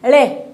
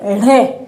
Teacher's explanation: तो ळे में जो है वो वायु कम निकल रही है, ळे, और ढे की जो स्थिति है उसमें वायु ज्यादा निकल रही है, तो ये अल्प प्राण में जाएगा, और ये जो ढे है ये महाप्राण में जाएगा।